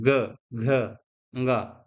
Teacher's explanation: ऐसे वर्ण जिनके उच्चारण में स्वर तंत्रियों में कंपन पड़ता है